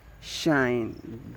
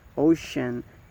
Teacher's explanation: The voicing is voiceless, and the place of articulation is post alveolar, and it is the z sound. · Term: the sh sound